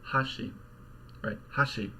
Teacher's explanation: immediately there's a drop and the rest of the word the last Mora is lower hot sheet so we've basically just got this high low contrast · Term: Japanese pitch accent